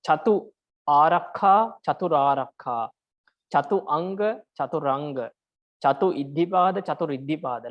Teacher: In Sanskrit it is chatur. So when you combine chatu with another word which begins with a vowel, then you have to put R in the middle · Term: R is inserted